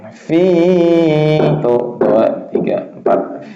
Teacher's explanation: Fi, panjangnya 4 harokat boleh.